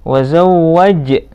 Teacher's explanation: qalqalah sughra karena berada di tengah, harus dipantulkan ja-nya.